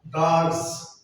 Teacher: Then za, the plural za, dogs. The morpheme is sa, the same sa, but it is realized as za.